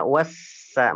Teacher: lamnya enggak nampak, berarti enggak jelas. Jelasnya di huruf berikutnya. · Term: lam syamsiyah